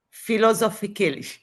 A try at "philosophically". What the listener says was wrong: not Z, but it is S. It's philosophically. Not Z, but it's philosophical. Philosophical. It is from the word philosophy. Philosophical.